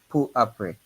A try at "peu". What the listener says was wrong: Not pour. Peu. Peu après.